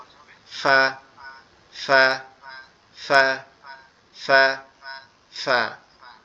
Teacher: আমাদের উপরের দাঁত নিচের ঠোঁটের পেটের সঙ্গে লাগবে, লেগে আওয়াজ হবে